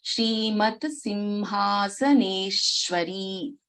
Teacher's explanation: Shri Maharagni Smt.Simhasaneshwari. Shrimat, here the Samyuktakshara ta and sa both should be heard.